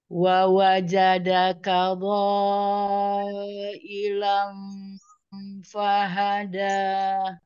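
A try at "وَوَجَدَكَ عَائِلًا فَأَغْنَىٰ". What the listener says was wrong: Huruf dodnya tebal lagi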